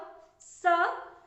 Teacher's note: जीभ दांत से टकराती है, इसलिए इसका नाम है दंत स।